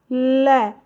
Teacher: ल में बोल कर देख रहे हो तो दंत टच हो रहा है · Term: वत्स्य